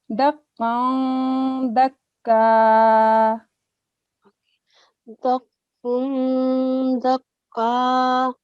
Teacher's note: Conceal nasal sound for this tanween, this fatatan, because it's followed by a dal.